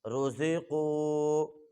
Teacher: را کو بھی موٹا کریں گے، زا کو سختی کے ساتھ پڑھیں گے سیٹی کے ساتھ، اور قاف کو بھی موٹا کریں گے